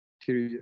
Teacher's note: So there is no Y sound in this one. If there's a vowel after the R, there is no Y sound. It's just like they call it the Latin E, where the long E begins without the closing Y sound.